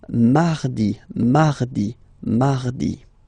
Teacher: you can hear that you don't pronounce it that strongly, this R